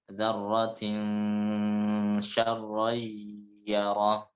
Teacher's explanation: Dibaca ditahan 2 harokat disertai dengan gunnah. · Itu juga di syarray, itu ra yang berharokat fathah tanwin bertemu dengan ya, itu juga harus ditahan menjadi 2 harokat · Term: ikhfa